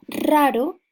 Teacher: la primera y re es vibrante múltiple raro mientras que la segunda ere es vibrante simple